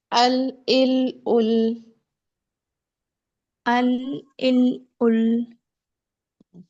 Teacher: زبان کا کنارہ جب سامنے دانتوں سے لگے۔ یہاں سے لام، نون، را ادا ہوں گے